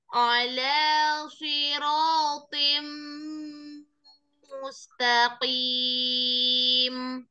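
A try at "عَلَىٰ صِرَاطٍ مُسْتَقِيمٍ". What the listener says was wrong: Alanya jangan lidahnya pangkal lidahnya jangan jangan naik. Ala jangan. Mustaqim.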